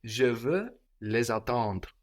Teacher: try to keep the RE kind of in your nose, you know? Don't go all the way into the E.